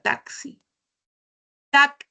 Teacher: el sonido de la X tiene doble fonema. Se activa la K y la S.